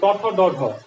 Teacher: তালেব্যমূলীয় কেন? কারণ দেখো জিভটা যায় একবারে তালুর পেছন দিকে যায় লাগে, এই জন্য বলে তালেব্যমূলীয়।